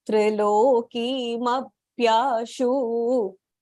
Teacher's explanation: The shu there is short rasvah, so you have to just shorten it a little bit.